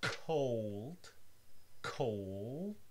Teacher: In the word cold, cold, you get first an aspirated K and then a dark L, cold. If you pronounce it very slowly, you'll see that the tip of your tongue is not moving towards your alveolar ridge, cold. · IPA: [kʰoʊɫd]